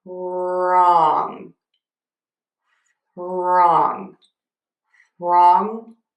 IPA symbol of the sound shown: rɔŋ